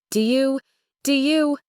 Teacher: The O sound gets very short and soft almost disappearing.